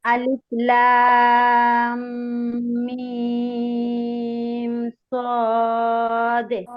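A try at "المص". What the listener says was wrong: আচ্ছা, লামের মধ্যে টান কম হয়ে গেছে, লাম বলার পরে যে গুন্নাটা করতে হবে, গুন্নাটা হালকা হয়ে গেছে।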